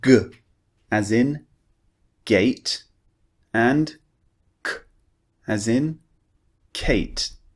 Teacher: So what we do is we push the back of our tongue up, we block the air, and then we release.